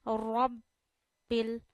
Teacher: बा पे काफी जोर डालना चाहिए क्योंकि हम तस्दीक वाले लफ्ज को वाजिया करते हैं